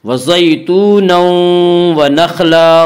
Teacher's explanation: یہاں تنوین کے بعد یومنو کے چار حرفوں میں سے واو آ رہا ہے اس لیے یہاں پہ ادغام بالغنہ ہوگا۔ وزیتون و نخلا، خا کو پر پڑھیں گے، خا حروف مستعلیہ میں سے ہے۔